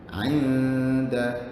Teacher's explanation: Ikhfa dia masuk kategori dengung yang sengau. Dengung yang tak jelas.